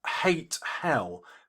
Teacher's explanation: This is a double syllable emphasized. It's called a spondee. It breaks the iambic pentameter.